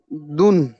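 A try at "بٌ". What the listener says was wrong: দুন কেন হবে বা আর দালের কোন মিল আছে বলেন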